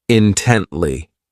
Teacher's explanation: This adverb has three syllables and the stress is on that second syllable